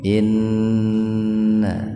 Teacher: inna gunah ya nun bertasdid itu gunah gunah itu mendengung ya biar terdengar mendengung ditahan dua ketukan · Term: gunnah